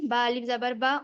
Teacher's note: کھینچ کر پڑھ جی رہے ہیں وہ مدہ ہے با الف زبر با، اور جو جلدی پڑھ رہے ہیں وہ حرکت ہے، اور حرکت کو جلدی پڑھتے ہیں اور مدہ کو ایک الف کی مقدار کھینچ کر پڑھتے ہیں